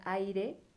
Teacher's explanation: la a es una vocal abierta fuerte y la y es una vocal débil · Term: diptongos